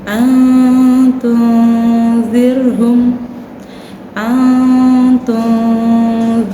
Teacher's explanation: Apabila huruf nun sukun atau tanwin bertemu salah satu huruf ini, maka cara membacanya disamarkan. Samar itu menjaga antara jelas dan dengung.